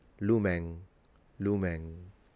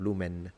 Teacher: the way ancient Romans would have pronounced this word would have been with a fully nasalized N at the end. Lumen, lumen, instead of lumen, if you can tell the difference.